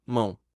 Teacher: mão como em uma sílaba não pode ter duas vogais juntas a letra O que tem som u se tornou uma semivogal